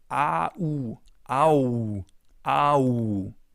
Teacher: This one is probably the easiest diphthong. It's just the German A plus the German U. So you basically read it as it's written.